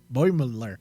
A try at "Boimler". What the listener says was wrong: No, Boimler. There's not 3 syllables. 2.